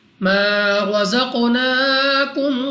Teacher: را پر زبر را کو پر یعنی موٹا پڑھیں گے